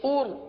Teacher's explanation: اس را کو پر پڑھیں گے کیونکہ را ساکن سے پہلے پیش ہے